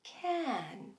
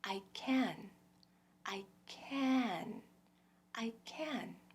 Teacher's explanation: do you hear that graceful shape it goes up swells comes back down gracefully and tapers off gradually